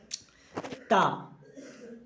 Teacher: जीभ दांतों का स्पर्श करती है